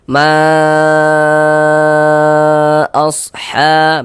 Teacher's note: Panjangnya itu 4 sampai dengan 5 harokat mad jaiz itu. Walaupun ada juga yang membacanya dengan 2 harokat. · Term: mad jaiz munfasil